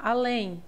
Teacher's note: Aqui nós temos uma oxítona, pois a sílaba mais forte é o lém